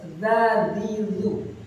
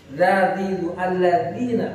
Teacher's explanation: mestinya nggak ada desisnya, harus dzadidzu